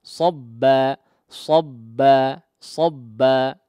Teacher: Kemudian di akhir madnya ya, jangan dihentakkan ya. Sabba jangan kemudian menutup kedua pita suaranya sehingga seolah terkesan di situ menambah huruf hamzah sukun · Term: mad iwad